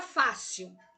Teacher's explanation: a sílaba tônica da palavra fácil é a Fá. Veja, sil é a última, Fá é a penúltima.